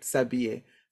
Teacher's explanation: The H, we don't pronounce the H. And most H's in French are mute. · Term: mute H